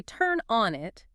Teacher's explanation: you are ending the phrase on a weak dying fall. It feels musically unfinished to the ear.